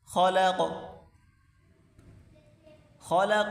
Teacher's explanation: خا کو موٹا کریں، قاف کو بھی موٹا کر کے پڑھیں گے